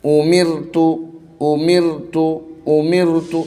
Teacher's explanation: رائے ساکنہ سے پہلے اگر زیر ہو یا را کے اوپر زیر ہو تو اس کو جو ہے ہم باریک پڑھیں گے، یا رائے مشددہ کے اوپر بھی اگر زیر ہو تو بھی ہم اس کو باریک پڑھیں گے.